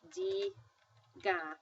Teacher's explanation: And again, for the accent piece, it was diga, and naturally the accent was falling on the D, the second to last syllable